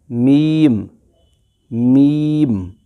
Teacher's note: وہ لپس سے ادا ہوتا ہے، لپس کے باہر والے حصے سے، لپس کے اس خشک والے حصے جیسے میم میم۔ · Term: میم کا جو مخرج